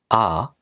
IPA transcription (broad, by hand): a